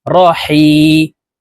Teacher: হা হরফকে হলকের মধ্যখান থেকে উচ্চারণ করব, কারণ হার মখরাজ হলকের মধ্যখান থেকে হবে।